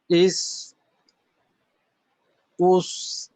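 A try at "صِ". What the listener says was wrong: হ্যাঁ জবর আর পেশের সাথে যখন জজমের উচ্চারণটা পড়লেন তখন মোটাটা যতটুকু হয়েছে, জেরের ক্ষেত্রে কিন্তু মোটার পরিমাণটা একটু বেশি কম ছিল, আর একটু বাড়ানো দরকার। ইউস,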